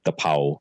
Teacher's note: these clusters you know like KR or p r or PL they just get simplified down to just K or P just the first part